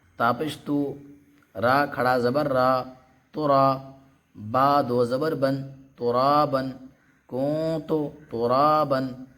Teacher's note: تو حروف اخفا میں سے جب تا آ گیا تو اس کو بھی ہم ناک سے پڑھیں گے